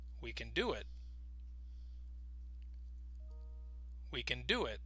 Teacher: notice we don't emphasize the word can, but we do emphasize the word do.